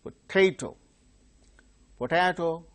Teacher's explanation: second syllable is stressed